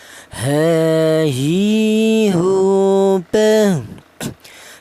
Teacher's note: Huruf H ini keluarnya huruf berasal di pangkal tenggorokan ya, atau tenggorokan bagian bawah.